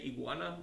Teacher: when I say iguana, my G kind of gets like swallowed in the middle of that word.